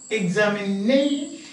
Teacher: So you will say stress is on 1, 2, 3, 4th syllable. Stress is on the 4th syllable.